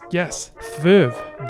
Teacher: This is a coronal followed by a labial.